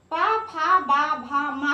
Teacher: किसी कोई भी वर्ण आप इसमें बोलेंगे तो आपके दोनों ओठ जुड़ जाते हैं। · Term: ओष्ठ